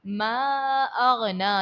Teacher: تبت یدا ابی لہب وتب، ما اغنا، یہاں پر دیکھیے گا حمزہ ہے دوسرے کلمے میں، تو یہاں پر بھی مد منفصل کا قاعدہ ہے، حروف مدہ کے بعد حمزہ دوسرے کلمے میں ہے۔ غین ہے، غین کو حرف مستعلیہ ہے تو اس کو آپ پر پڑھو گے، موٹا پڑھو گے۔